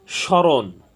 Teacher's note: সংযুক্ত হলে সাধারণত সে ম ফলার কোন উচ্চারণ হয় না তবে বাংলা প্রমিত উচ্চারণে যে বর্ণের সাথে ম ফালা যুক্ত হবে সে বর্ণের উচ্চারণ সামান্য নাসিক্য হবে · তো আমাদের নিয়মটি ছিল পদের আদ্য পদে ব্যঞ্জন বর্ণের সাথে মফলা যুক্ত হলে সে মফলার কোনো উচ্চারণ হয় না, কিন্তু মফলাযুক্ত বর্ণটি সামান্য নাসিক্য হবে। তো এখানে স্মরণ, এখানে তালব্য স প্রথম বর্ণ, প্রথম ব্যঞ্জন বর্ণ শব্দের, এখানে মফলা যুক্ত হওয়ার কারণে এখানে ময়ের কোনো মফলার কোনো উচ্চারণ হয়নি।